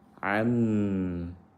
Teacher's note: nun sukun bertemu mim, diidghamkan ke mim, idgham bi gunnah.